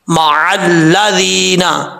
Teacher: वस्बिर नफ्सका मअल्लज़ीना, मीम के बाद आइन है, आइन को पढ़ते हुए, आइन क्योंकि हल्क से अदा होता है तो इसको पढ़ते हुए खास याद रखना है, कहीं ऐसा ना हो कि हमजे की आवाज है